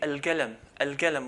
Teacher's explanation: instead of saying al-qalam with the qaf, they change it to a g, al-galam